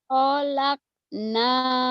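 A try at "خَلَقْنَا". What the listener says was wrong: Kholnya pendek. Khalaqna. Khalaqna zaujaini. Khalaqna zaujaini. Khalaqna zaujaini. Khalaqna zaujaini. Khalaqna zaujaini.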